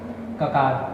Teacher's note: ककार का स्थान है कंठ, आभ्यंतर प्रयत्न है स्पृष्ट, बाह्य प्रयत्न है विवार श्वास घोष, प्राण है अल्प प्राण